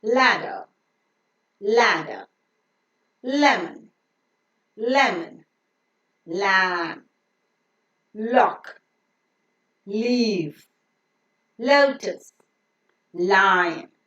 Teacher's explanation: the letter L is pronounced with the tip of the tongue touching the teeth Ridge and the sides or the rims of the tongue being lowering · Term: lateral sound